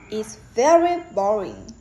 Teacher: Very gets more stressed than boring because the speaker wants to emphasize his her feeling.